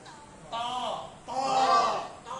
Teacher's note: জিহ্বার আগা, না, জিহ্বার আগা সামনের উপরে দুই দাঁতের গোড়ার সঙ্গে লাগায়। জিহ্বার আগা কোথায় লাগবে? সামনের উপরে দুই দাঁতের গোড়ার সঙ্গে লাগবে। লাগা একটু শক্ত উচ্চারণ হবে। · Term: ত হরফের